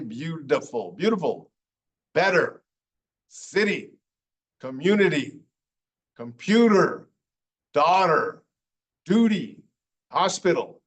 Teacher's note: It's actually supposed to be a T sound, but a lot of Americans at least make it sound like a D.